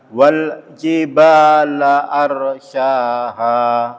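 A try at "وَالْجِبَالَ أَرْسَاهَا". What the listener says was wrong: Arnya tebal juga. Ro sukun itu kalau sebelumnya fathah atau dhamma ditebalkan bacanya.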